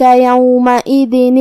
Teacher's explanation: کلمت یومئذ میں یہاں حمزہ ہے اور حمزہ کے نیچے زیر ہے تو ہم حمزہ کو ظاہر کریں گے